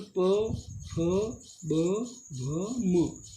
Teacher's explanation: ये ओष्ठ यानी होठ से बाहर की तरफ ये होठ दोनों टच होते हैं।